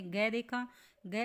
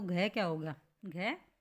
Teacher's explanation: गै अल्प प्राण था, तो घ क्या हो गया, घ महाप्राण।